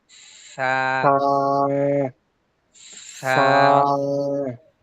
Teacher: সাটা জিব্বা একটু বের করে বলতে হবে